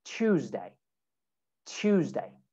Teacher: when you have T and Y and T and U, you can make that a ch sound